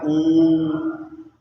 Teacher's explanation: उच्चारण करते समय ओठ गोलाकार होते हैं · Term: वृद्धमुखी स्वर